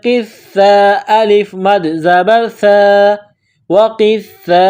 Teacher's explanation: واو میں ہونٹوں کو گول کرنا ہے، قاف کو موٹا کرنا ہے ، قاف کو سا کے ساتھ ملانا ہے قاف سا زیر